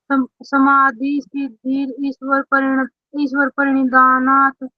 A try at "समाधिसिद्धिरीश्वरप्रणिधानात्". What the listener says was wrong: ईश्वर नहीं बोला जाएगा गुड़िया, समाधि सिद्धिरी, समाधि सिद्धिरीश्वर, रीश्वर बोलेगा, ईश्वर नहीं बोलेगा, ये रह के लगेगी। समाधि सिद्धिरीश्वर प्रणिधानात्,